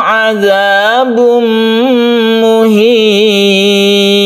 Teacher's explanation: kita masukkan tanwin ini ke mim sehingga membentuk tasydid mim dan kita gunnahkan. Muhin mat adid li sukun kita panjangkan 1, 2 atau 3 alif. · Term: idgham bi gunnah